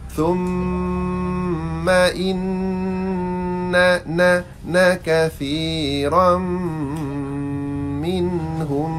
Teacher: Thumma lidah keluar. Thumma lidah keluar dan kena dengung bagi cukup dua harakat.